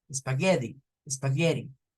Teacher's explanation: Les he dicho que las T's en medio de dos vocales, algunos estadounidenses la hacen como R, otros estadounidenses la hacen como una D